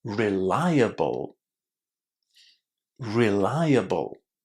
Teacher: So, what you need to remember about this word is that it comes from the verb rely. And it maintains its pronunciation rely. And then the ending is really, really short.